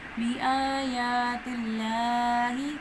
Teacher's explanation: کھڑی زبر الف مدہ کے قائم مقام مدہ ہوتی ہے تو یہاں پہ مد اصلی کرنی ہے